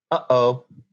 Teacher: we have a consonant that's made with the glottis in english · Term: glottal stop